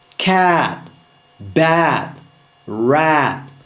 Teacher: Le A ouvert, c'est-à-dire le A large et descendu.